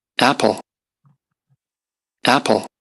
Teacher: if you begin the word with a glottal stop, you have the maximum amplitude in a vowel from the very beginning of it · Yes, it starts with a glottal stop. apple, apple, So there is a consonantal segment in the beginning of this word, and it's a glottal stop.